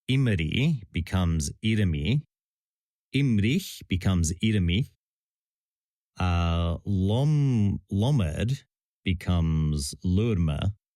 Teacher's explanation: the R or L is transplanted sometimes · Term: metathesis